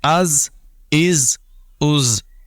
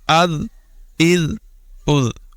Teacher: زا میں سیٹی کی آواز ہوگی اور آواز باریک ہوگی، لال میں آواز باریک ہے اور سیٹی کی آواز نہیں ہوگی